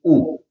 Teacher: اس لیے کہ یہ ساکن نہیں ہے، اس کے اوپر جزم نہیں ہے، لہذا اس کو آپ لمبا کر کے نہیں پڑھیں گے، بلکہ یہ واو جو ہے چونکہ خالی ہے تو پڑھنے میں نہیں آئے گا، صرف آپ حمزہ کی پیش پڑھیں گے اور وہ اس کی آواز رہے گی او، بس اتنی آواز رہے گی او۔